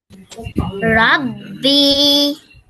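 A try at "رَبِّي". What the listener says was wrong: বি টান দিলেন কেন এখানে কি টান আছে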